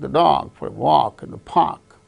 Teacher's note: Only take, dog, walk, park. Only these words gain stress because they are the content words and others are form words.